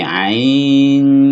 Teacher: Nah, ini ada perbedaan di sini antara para ahli ilmu tajwid dengan para imam. Kalau dalam ilmu tajwid, nun sukun bertemu shod ini samarnya seperti ini, ain, jadi NY. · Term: ikhfa